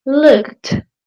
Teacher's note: The ed sounds like a t, like really strong